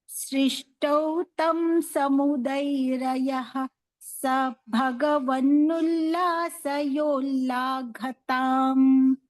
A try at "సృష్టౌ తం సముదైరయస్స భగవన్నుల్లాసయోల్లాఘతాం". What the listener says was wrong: సముదైరయ అని విసర్గ చెప్పకుండా సముదైరయస్స భగవన్ అని చెప్పాలి. సృష్టౌ తం సముదైరయస్స భగవన్నుల్లాసయోల్లాఘతాం.